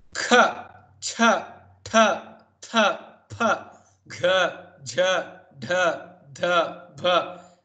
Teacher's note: Mahaprana, a lot of breath you have to use, a lot of effort you have to make.